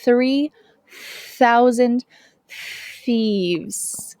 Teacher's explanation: my tongue is between my teeth and there is a stream of air this is essential for saying this th sound 3,000 thieves